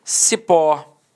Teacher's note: repare que a sílaba tônica é a última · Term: oxítona